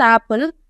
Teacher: as it is in apple, it is an low front vowel.